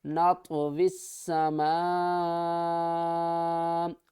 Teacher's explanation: آگے دیکھیں میم الف مد زبر ما، بڑی مد ہے کیونکہ حمزہ اسی کلمے میں ہے، تو 5 الف کی مقدار کھینچ کر پڑھیں گے۔ نطوی السماء، حمزہ زبر آ، نطوی السماء۔